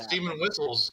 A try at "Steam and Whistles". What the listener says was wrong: When you heard up in the chat and correct me that it's not steaming whistles, it's steam and whistles. I'm just saying "n" instead of "and." It sounds like steam. It sounds like whistles that are steaming.